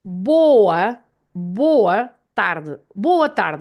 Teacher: So this vowel at the end, the A at the end of the word, they have this sound of uh, uh.